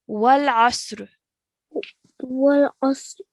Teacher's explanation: Okay, so this is a throat letter, and it's a letter made from the middle of your throat